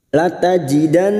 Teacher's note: nun yang bertasdid gunnah musyaddadah, kita dengungkan selama 3 harokat